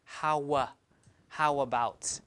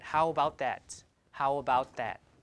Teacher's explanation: the speaker would put in a w because Y is front right W is back so it will match this back place so instead of saying how about we say how how about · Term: linking